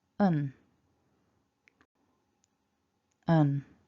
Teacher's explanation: we've got a tiny schwa, so it's really weak, and then we've got a n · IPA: /ə/